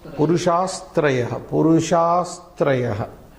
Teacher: This visarga shall be made of sakara. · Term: visarga sandhi